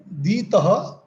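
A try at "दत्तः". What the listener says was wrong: Except that double takara.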